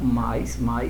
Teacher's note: Na palavra mais, esse I é fraco, então ele é semivogal, o A é forte, sequência vogal semivogal de tom decrescente